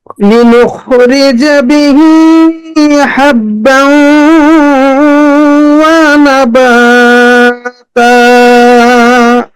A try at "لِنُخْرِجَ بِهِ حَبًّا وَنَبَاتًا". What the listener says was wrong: নাতে একটু টান হয়ে যাচ্ছে মনে হয়।